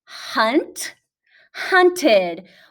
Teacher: it sounds like a short i and a d